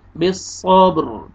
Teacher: با پہ قلقلہ بھی کریں گے ڈبل ساؤنڈ آئے گا